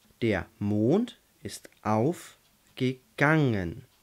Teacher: also Mond wird betont auf wird betont und Gang wird betont